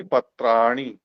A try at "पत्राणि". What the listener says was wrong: वो नी को दीर्घ करके ही मानोगे नहीं।